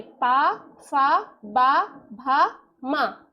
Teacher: ओष्ठ मतलब ओठों को छूते हुए, तो दोनों ओठों को छूते हुए निकलेंगे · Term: ओष्ठ वर्ग